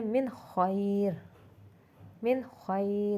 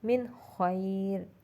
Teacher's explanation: नून साकिन के बाद क्या आ गया, खै, हुरूफ हल्की में से, इसलिए हमने नून को इजहार किया